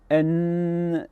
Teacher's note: Et ce qui est important, c'est que dès qu'on prononce le son N, N, il y a une vibration continue très différente du K.